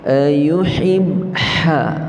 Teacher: huruf yang keluar daripada wasatil halq, iaitu pertengahan halqum kita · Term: Huruf ha